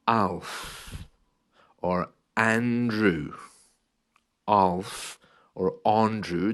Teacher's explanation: if that a is at the beginning of the words it's more of an ah sound